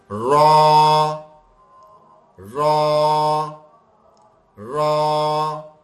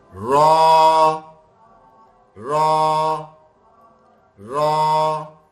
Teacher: زبان اگر صحیح چل رہی ہے نا تو ہماری نہ دانت کو ٹچ ہوگی سامنے والے اوپر کے دانتوں کو، نہ اس کی جڑ میں ٹچ ہوگی، اس سے اور پیچھے تالو سے ٹچ ہوگی، اور پھر یہ موٹا کر کے پڑھا جائے گا